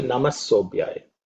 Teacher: Okay, it's like namah. So the air is going out, and that air turns into an s when you chant sobhya. So that is the way, it's a continuation.